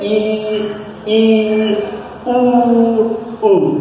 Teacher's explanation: जिन स्वरों को बोलने के लिए जीव हमारी ऊपर उठ जाती है पूरी तरह से, उसे समृद्ध स्वर कहते हैं